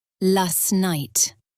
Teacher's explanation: Also, we don't say last night very clearly. We drop the T sound, so it becomes last night. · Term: connected speech